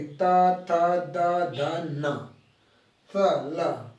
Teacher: ठीक है, त वर्ग बोलोगे, दंत से जीवा आके टच करेगी